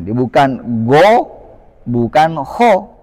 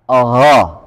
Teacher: Kalau o harus membulatkan bibir, sedangkan fathah itu tidak membulat bibir. Nah, di sini hanya berharakat fathah saja.